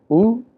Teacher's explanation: if you want to refer to the sound vowel U, we refer to it as rounded close back vowel